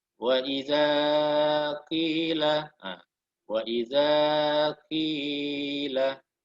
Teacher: Dua kali kesalahan ringan karena melebihi 2 harokat.